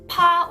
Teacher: a neutral sound that is not voiced and has minimal aspiration